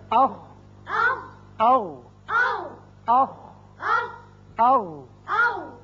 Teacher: یعنی دونوں مخارج میں آواز حلق کے اوپر والے حصے میں جا کر رکی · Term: اقصی حلق